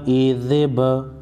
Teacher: با ساکن پر قلقلہ کریں گے